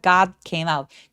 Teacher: D는 디귿 받침 정도로 가볍게 처리하고요.